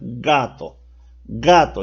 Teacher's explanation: para pronunciar gato se pronuncia prácticamente con el fondo de nuestra boca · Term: velares